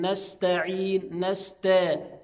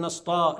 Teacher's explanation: السين والتاء كلها حروف مرققه